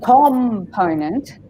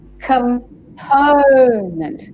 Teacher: The po is stressed, not the com.